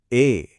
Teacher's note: इसमें गले से निकलने वाली अ और तालू से निकलने वाली ई की आवाज एक साथ मिलती है।